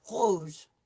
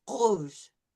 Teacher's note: the sound is going to come from the back of my throat. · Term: uvular R